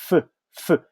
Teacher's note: As you can see, I'm using my upper teeth, my lower lip, so I say f. That's the only one that produced with these two parts, okay? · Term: f sound